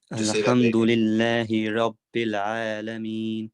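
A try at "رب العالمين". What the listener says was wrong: Rabbil Alameen. No bounce on the lam. Rabbil Alameen.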